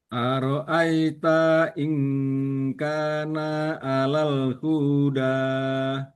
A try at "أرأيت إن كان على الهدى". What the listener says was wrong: Oke. Pendek lagi. Perhatikan. Ara'aita in kana 'alal huda. 'Alal huda. 'Alal huda. Lagi ara'aita. In kana 'alal huda. أرأيت إن كان على الهدى. Ya, nanti lihat lagi panjang pendeknya. Perhatikan yang panjang dan yang pendeknya.